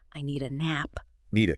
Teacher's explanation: the D at the end of need just sort of blends into the A. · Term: Linking